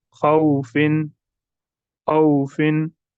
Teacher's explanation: खौफिन नहीं पढ़ना है, खींच कर नहीं पढ़ना है, या खौफिन झटका भी नहीं देना है, बिल्कुल हमें नरमी से मारूफ पढ़ना है। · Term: वाव लीन